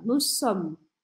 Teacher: Precisa parar o som nesse M.